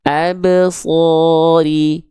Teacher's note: Jangan lupa ba sukunnya dipantulkan tanpa tertahan